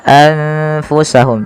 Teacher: maka nunnya disamarkan kepada huruf Fa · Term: Ikhfa, ikhfa